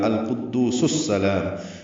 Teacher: قاف پر ہے، دو واو مدہ ہے، دو حرکات لمبا کریں گے. سین کو السلام کے سین سے ملائیں گے تو سس سلام ہو جائے گا